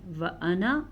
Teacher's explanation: لفظ انا یہ واحد ایسا لفظ ہے جس کا الف نہیں پڑھا جاتا